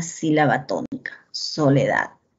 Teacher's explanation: Y esa sílaba que se pronuncia con mayor fuerza de voz se le denomina sílaba tónica, soledad. La sílaba da se pronuncia con mayor fuerza de voz.